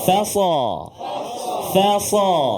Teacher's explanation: huruf fa, dia berada sebelum huruf sad. Jadi jangan terkesan ataupun terikut nak tebal huruf sad.